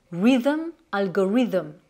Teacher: Mais ici, comme dans d'autres mots, on va faire le son the. Donc là, c'est comme si on faisait un petit Z. Donc on met moins de pression sur les dents supérieures avec la langue